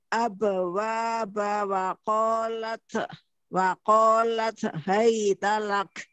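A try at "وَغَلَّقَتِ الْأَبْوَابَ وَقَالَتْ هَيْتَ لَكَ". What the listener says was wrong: Bukan Hamas pada huruf ta itu. Suara yang keluar bukan ceh ya, bukan wakolat, bukan ceh gitu ya, tapi hanya nafas saja, dorongan nafas. Baitalak. Salah.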